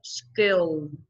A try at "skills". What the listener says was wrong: Skill. Thiếu âm Z đó. Số nhiều.